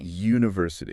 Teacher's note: we don't start with an oo sound. You start with a Y consonant sound.